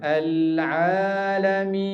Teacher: Jangan suara tu dia pergi ke hidung tu. Biar dia keluar mulut. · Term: ain